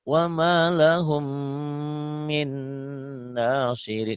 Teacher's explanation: Karena mimnya bertasdid ada gunahnya. Jadi ada dengungnya.